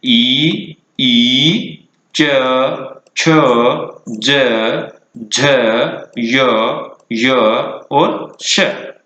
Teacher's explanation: इस प्रकार इन वर्णों का उच्चारण स्थान हुआ तालु